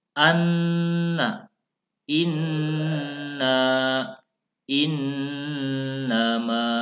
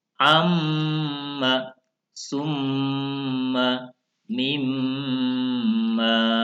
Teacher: Kemarin sudah kita bahas bahwa gunnah itu sendiri artinya adalah mendengung. Jadi cara bacanya mendengung, ditekan dua ketukan, satu alif atau dua harokat. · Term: bacaan gunnah